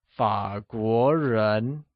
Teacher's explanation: Fǎguó is pronounced with falling rising tone on a and a mid rising tone on the o